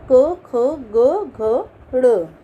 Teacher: जिन वर्णों का उच्चारण कंठ से होता है इन्हें कंठे कहते हैं। तो इसके अंतर्गत हम कंठे के अंतर्गत क, ख, ग, घ, ड़ और साथ में हम ह व्यंजन लेंगे।